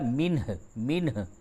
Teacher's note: وقف کی حالت میں ہا کو ساکن کریں گے ، ہوگا منہ، منہ، ہا کی آواز ہلکی سی نکلے گی،